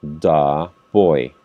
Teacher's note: En este caso, the pronunciation is the boy, because the noun begins with a consonant. Cuando el sustantivo inicia con una consonante, la pronunciación de esta palabra o del artículo es da.